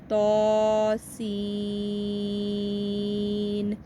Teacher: ہماری سین کی آواز جو ہے وہ تو سے زیادہ لمبی ہونی چاہیے۔ تو کو فقط ہم نے 1 الف کے برابر لمبا کرنا ہے، تو سین۔